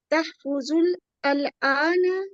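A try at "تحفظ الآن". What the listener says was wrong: अल आना नहीं पढ़ेंगे, तहफ़ज़ुल आना मिलाएंगे ना। अलिफ लाम जब भी आता है पीछे मिलाते हैं, पीछे से मिला के पढ़ते हैं। अल आना नहीं पढ़ सकते आप।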